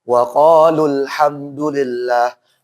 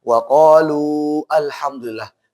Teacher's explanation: Intinya adalah kalau wasol hilang matobi'inya.